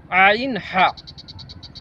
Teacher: দুই নম্বর মাখরাজ হলকের মধ্যখান হইতে দুইটি হরফ উচ্চারিত হয়, যথা আইন হা। মানে এখানে আইন এবং হচ্ছে ছোট হা, হায়ে হুত্তি।